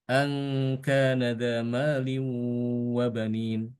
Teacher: Ini untuk Imam Hafiz kan dia bacanya hamzanya cuma satu aja.